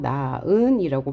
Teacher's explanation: 네 번째 경우에는 히읗 뒤에 모음으로 시작하는 어미나 접사, 즉 히읗 뒤에 형식 형태소가 올 경우에는 히읗이 탈락돼요. 그래서 나은의 경우 히읗이 탈락돼서 나은이라고 발음하고요.